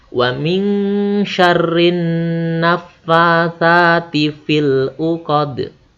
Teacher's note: Perhatikan huruf sa-nya ya, di ujung lidah dirapatkan dengan gigi atas.